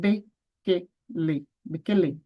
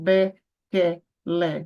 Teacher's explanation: Pronuncie com um som fechado, curto, rápido